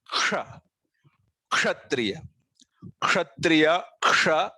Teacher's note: इस अक्षर का उच्चार है क और श, इन दोनों के मेल से होता है